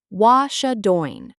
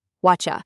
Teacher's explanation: The T in what and the Y in you meet and make a cha sound. Whatcha. And we often drop the G at the end of doing.